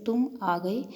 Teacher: तुम और आ के बीच में एक हल्का विराम सा आता है। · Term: संगम